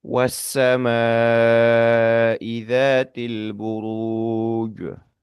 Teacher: Terdapat bunyi panjang yang bertemu dengan hamzah ya. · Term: bunyi panjang bertemu dengan hamzah